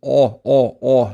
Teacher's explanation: But the differences with is if this was the tongue, if this was a tongue, right? The back part of the tongue lifts up. It lifts up and it creates this thick sound.